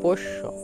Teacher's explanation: মূর্ধন্য স এবং তালেব স্য এর একই উচ্চারণ প্রত্যেকটি স এর মত উচ্চারিত হবে